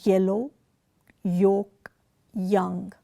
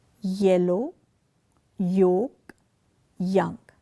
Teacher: Here the tongue is pressed hard against the palate. The hard palate is behind the alveolar ridge before the soft palate. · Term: palatal